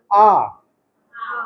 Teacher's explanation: आ इसको एक open vowel बोलते हैं। आ में क्या होता है कि मैक्सिमम माउथ खुला है